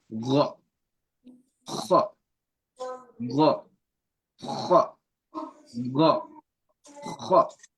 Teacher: So the Ghain and the Kha, they come from the first layer of the throat, like they're very close, but they're not the same sound.